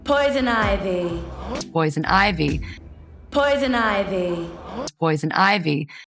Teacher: But when she becomes poison ivy, a woman locked in a continuous high estrogen estrus phase, her vocal pitch shifts upward. It becomes lighter, more melodic, and incredibly breathy.